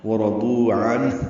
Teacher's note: عنہ نون ساکن پہ اظہار ہے، ہا ساکن پہ حمز ہے، ملانے کی صورت میں عنہ ہا کو جلدی ادا کریں گے، لمبا نہیں کریں گے